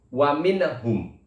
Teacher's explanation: Jelasnya seperti apa? Nunnya dibaca jelas tanpa adanya dengung. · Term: idhar halqi